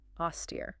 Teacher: two syllables, stress on the second.